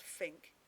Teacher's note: a th becomes an f in a word like uh think it becomes fink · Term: th fronting, TH fronting